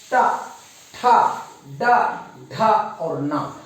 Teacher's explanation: अब देखिए हमारा जीभ किसको स्पर्श कर रहा है, ट, ठ, ड, ढ और न, अर्थात हमारा जीभ जो है मसूड़ा को स्पर्श कर रहा है, मसूड़ा को। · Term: ट का जो आवाज